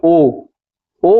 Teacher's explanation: कंठ होगा और ओष्ठ होगा। अब जैसे कि ओ बोल रहे हैं तो हमारा जो ओष्ठ है, हमारा जो होठ है वो गोल हो रहा है, और ओ है जो उसका आवाज कंठ से आ रहा है। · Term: कंठ ओष्ठ